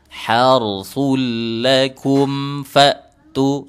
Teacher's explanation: Harsul lakum fa'tu, gitu kan, izhar syafawi. Jadi dijelaskan mim sukunnya, jangan didengungkan.